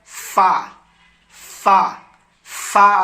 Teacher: ऊपर के दांतों का किनारा नीचे के होंठ से मिलकर फा अदा होता है